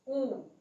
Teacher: ऊ को बोल के देखिए तो हमारे ओठ गोलाकार बन रहे हैं। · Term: वृत्तमुखी वर्ण